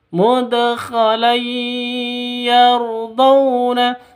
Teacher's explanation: Tanwin bertemu dengan ya. Cara bacanya masuk ke ya disertai dengung dua ketukan.